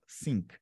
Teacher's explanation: E a segunda é sink, sem encostar nada, ó. Sink.